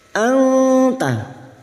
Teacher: Nun sukun bertemu ta ikhfa hakiki. Kita samarkan bunyi nun sukun dan mendengung selama 3 harokat